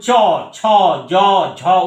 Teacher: ঘৃষ্ট ধ্বনির ক্ষেত্রে আমরা যখন চ, ছ, জ, ঝ উচ্চারণ করছি, একটা ঘর্ষণের পার্ট দেখতে পাচ্ছি, তার জন্য এটাকে ঘৃষ্ট ধ্বনি বলা হয়।